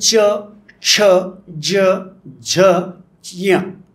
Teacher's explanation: तालव्य शब्द म्हणजे टाळ्याला जीभ चिटकवून का टाळ्याच्या दिशेने जीभ नेऊन जे शब्द निर्माण केले जातात